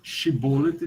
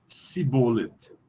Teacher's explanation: a tribo que eles estavam querendo prender não conseguiam produzir uma consoante palatal, shin